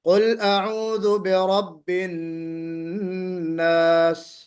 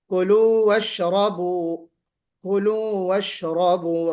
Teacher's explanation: تو ان تینوں حالتوں میں آپ دیکھ رہی ہیں، تینوں الفاظ میں، تینوں آیتوں میں کہ را کے اوپر زبر واقع ہو گیا، جس کی وجہ سے اس کو پر کریں گے